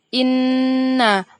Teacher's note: lafaz inna merupakan bacaan gunnah karena ada nun yang bertasydid